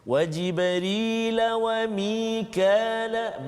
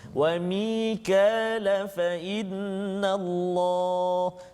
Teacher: Kalau saya sambungkan bacaan, dia jadi mat asli 2 harakat saja.